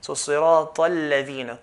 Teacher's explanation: when we're continuing from a word, we're going to skip the alif al-wasl. So sirata al-ladhina, ta straight to the lam.